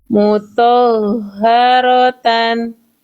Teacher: Jangan kepanjangan thnya. Ha langsung thnya satu harakat. Tekan di h-nya